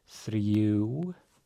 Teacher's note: we have our thorn, devoiced TH